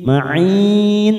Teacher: Bima ma'in, masuk pada huruf mim yang bertasdid, kasrah tanwin pada hamzah, siap masuk pada huruf mim, namanya bacaan idgham bi gunnah. Ma'in, mat arid disukun 4 harokat kita panjangkan